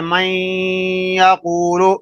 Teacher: نون یا میں مدغم ہو رہا ہے لیکن نون کی آواز باقی ہے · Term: ادغام ناقص